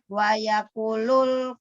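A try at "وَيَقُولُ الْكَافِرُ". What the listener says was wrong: Wa yaqu panjang. Nah, itu yang Ibu kadang-kadang suka lupa matobi. Itu matobi itu yang ada hijau, hitam hijau.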